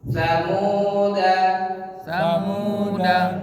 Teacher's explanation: Da panjang bila wasal danya dibaca pendek, bila waqaf dalnya dibaca sukun.